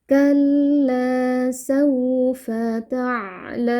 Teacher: Cara membacanya mu ini boleh dibaca panjang 2, atau enam harakat. Tapi karena kita membaca dengan bacaan yang sedang, maka di sini kita baca panjang empat harakat. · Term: mad arid lukun